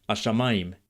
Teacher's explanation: And before that, there's the consonant hey in the definite article. Native speakers of Modern Hebrew these days seem to make the hey sound silent or very subtle in everyday speech.